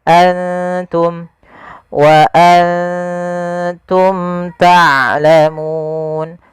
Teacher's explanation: Izhar artinya jelas syafawi berkenaan dengan bibir. Karena makhraj daripada huruf mim daripada bibir kita. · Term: izhar syafawi